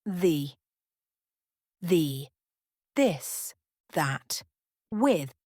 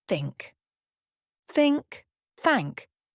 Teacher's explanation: TH, voiced, as in the, this, that, with TH. Unvoiced, as in think, thank.